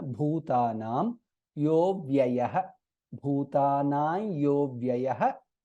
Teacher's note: Bhutanam, bha is mahaprana.